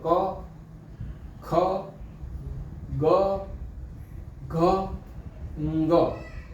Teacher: એટલે પહેલા અક્ષરો આપણા કંઠ નીકળ્યા એટલે આને કંઠ્ય કંઠ્ય વર્ણો કહેવામાં આવે